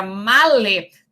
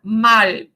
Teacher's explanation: a palavra male, o E final sofre apócope porque nós podemos ter a palavra mal